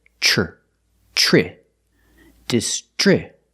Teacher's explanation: The TR makes the ch sound like chicken, plus the the R sound together